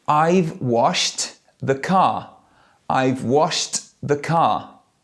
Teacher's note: The second verb, washed, the ED sounds like a T, washed.